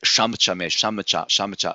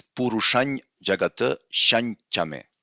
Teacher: we need to actually change this anusvara into their nasal pair, which is ny, purushany jagata.